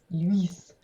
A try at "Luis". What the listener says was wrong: You have to enunciate the ooh.